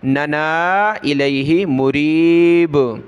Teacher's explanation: تدعوننا دو نون ہیں، دوسرے نون کو کھینچنا ہے مد کی وجہ سے